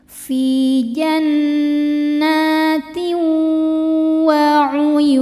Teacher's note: Lalu ada idghamhunah karena ada tanwin kasrah menghadapi huruf wau. Cara bacanya tanwinnya masukkan ke wau kemudian dengungkan. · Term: idgham bi gunnah